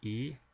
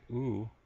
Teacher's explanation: e is produced when my tongue is actually right at the front of my mouth whereas when I say o I actually pull my tongue back and it's now located to the back of my mouth so